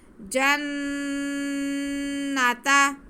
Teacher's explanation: जीम पे ज़बर है, नून मुशद्दद है, तो हम जीम को नून के साथ मिलाएंगे भी और नून मुशद्दद पे गुन्ना भी करेंगे। जन्नता, नून पे भी ज़बर, ताफ पे भी ज़बर, खींचना किसी को नहीं है।